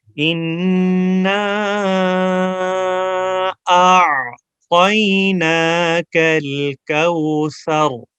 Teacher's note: طا کو موٹا کرنا ہے، جب پروناؤنس کریں گے زبان تالو کی طرف اٹھائیں گے طا موٹی ہو جائے گی